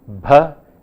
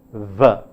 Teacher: They must learn to distinguish them by being aware of the fact that one of them is bilabial bh and the other is a labiodental v. One of them is a plosive bh and the other is a fricative v.